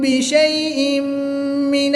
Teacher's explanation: تنوین کے بعد میم حرف یرملون میں سے ہے تو یہاں پر ادغام مع غنہ ہوگا، غنہ کر کے پڑھیں گے